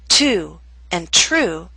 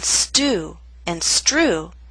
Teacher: With ST or STR, the true T loses that strong puff of air. So in the words to and true, we have the puff of air. But in stew and strew, that strong puff of air is absent.